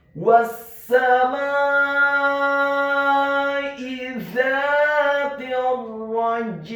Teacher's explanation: Karena ada huruf ain di akhir ayat, maka huruf jimnya dibaca sukun dan wajib untuk diqalqalahkan, dan huruf ain-nya dibaca sukun ditekankan keluar dari tenggorokan bagian tengah